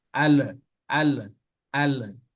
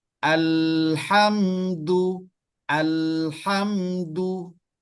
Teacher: jadi dia harus ditahan dan sifat lam itu ada inhiraf ke kanan atau ke kiri